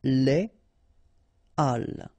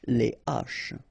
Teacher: So, but in that case still, even if you've got this H, okay, it belongs to this aspiré group of words, so containing this H, okay, and it means that you won't have the possibility to make the liaison between your article and your word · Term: H aspiré